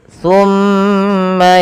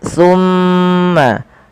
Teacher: Kemudian pada lafal summa yaquluna hadza, pada lafal summa tahan suara mimnya sepanjang 2 harokat. Summa jangan langsung dilepaskan karena ia ada bacaan gunnah pada lafal bacaan ini.